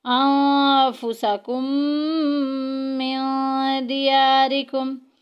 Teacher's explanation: نون ساکن کے بعد فا آ گیا جو کہ اخفاء میں سے ہے، چھپا کے پڑھیں گے